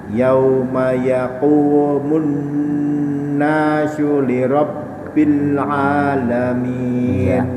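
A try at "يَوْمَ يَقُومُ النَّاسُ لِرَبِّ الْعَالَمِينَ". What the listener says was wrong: A-nya ya, A-nya mulai tadi kurang pas sebenarnya ya. Kurang masuk ke tengah ya.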